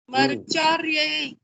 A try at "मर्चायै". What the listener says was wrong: नहीं डबल रा नहीं है, 2 बार रा नहीं है, मर्चायै।